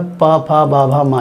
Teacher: जब भी आप पा, फा, बा, भा, मा यानी कि पूरे पावर के व्यंजन को जब आप बोलेंगे, जब उनका उच्चारण करेंगे, तो किसी भी जगह पर आप ऐसा नहीं हो सकता है किसी व्यंजन को बोलते समय कि आप अपने होंठों को चिपकाएं ना। होंठ अगर चिपकेंगे नहीं तो आप पा वर्ग का उच्चारण कर नहीं पाएंगे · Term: ओष्ठ व्यंजन